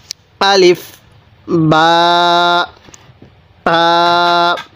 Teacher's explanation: বা টা দুই ঠোঁট থেকে উচ্চারণ করব